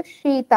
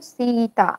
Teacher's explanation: जब छोटी की मात्रा लगी होती तो शीता हम लोग पढ़ते हैं, और जब बड़ी की मात्रा लगी होती तो सीता, ऐसे थोड़ा सा खींच कर पढ़ते हैं